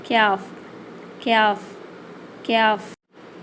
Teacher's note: இந்த எழுத்து நாக்கு மேலா அன்னம் கூரை இருக்குல்ல அதை போய் தொடணும்